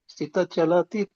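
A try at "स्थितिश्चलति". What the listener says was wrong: ಸ್ಥಿತಶ್ಚಲತಿ ಅಲ್ಲಿ ಗ್ಯಾಪ್ ಬಿಡಿ ನಡೆಯುತ್ತೆ ಸ್ಥಿತ ಅಂದ್ಮೇಲೆ, ಇಲ್ಲಾಂದ್ರೆ ಕೂಡಿ ಸ್ಥಿತಶ್ಚಲತಿ ಶಕೆ ಚವತ್.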